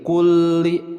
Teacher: lam bertasydid ingat setiap yang bertasydid ada penekanan